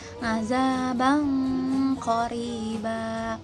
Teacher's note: lafalin nun secara samar dengan dengung dibarengi persiapan makhraj qaf atau tafkhim. Setelah itu lafalkan qaf berharokah. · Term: ikhfa tafkhim